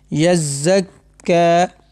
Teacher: کاف کے اوپر کھڑا زبر، اس کو ہم ایک الف یعنی 2 حرکات کے برابر کھینچ کر پڑھیں گے رفع مدہ کی طرح۔